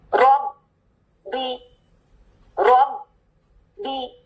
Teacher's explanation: पहले ब साकिन फिर ब हरकत के साथ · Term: ब मुशद्दद